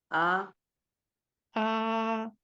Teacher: दो हरकत इसको लंबा कर देंगे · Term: खड़ी जबर